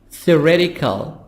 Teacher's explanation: T soft D between two vowels E and I